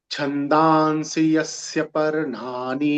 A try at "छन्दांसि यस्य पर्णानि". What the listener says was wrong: नी ज्यादा खींचना नहीं है, पर्णानि ह्रस्व है।